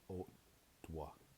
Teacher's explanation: O glottal T plus W becomes O dwa